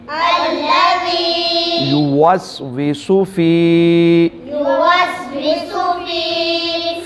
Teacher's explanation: فی جو ہے یا مدہ ہے اس کو بھی لمبا کر کے ایک الف کے برابر پڑھیں گے